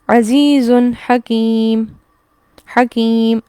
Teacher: اختتام کس پر ہو گیا؟ میم پر، تنوین حذف ہو گئی، تنوین ختم ہو گئی